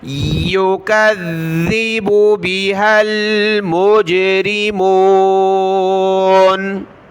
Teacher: جہنم التی یکذب، یا پیش یو، کاف ذال زبر کذ، ذال زیر دی، کذی. ذال کو سخت کیا تشدید کی وجہ سے اور ذال پر ہم نے زبان بھی نکالنی ہے